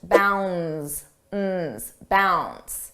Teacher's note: notice how bounds the D is not pronounced